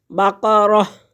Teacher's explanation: گول تا، اس کو ہم ہٹا دیں گے اور ہا پڑھیں گے۔ بقرہ، وقف کرنے کی صورت میں اس تا کو ختم کر دیں گے، بقرہ، تو ہا پڑھیں گے۔